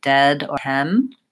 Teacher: They might say it with a more open sound, it might sound more like dead or hem.